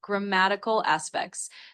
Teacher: grammatical with the emphasis on that mat card. And then specs.